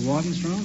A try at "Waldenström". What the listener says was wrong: No, it's an umlaut on the O. In Sweden, you pronounce the name Waldenström. Waldenström, yes.